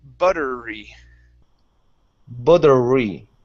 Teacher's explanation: So what you're saying is butterly, and you're pronouncing an L at the end, saying butterly. Instead of lee, it's re. So push your tongue down so it does not touch the top of your mouth.